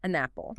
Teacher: The n sound from n attaches to the a in apple. It sounds like one word, an apple.